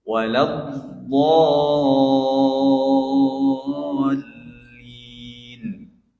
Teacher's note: Itu pada lafaz yang terakhir, ayat yang terakhir, do-nya harus panjang. Ini namanya mad bacaan panjang yang dinamakan para ulama tajwid mad lazim hilmi musaqqal. Itu yang harus dipanjangkan 6 harokat.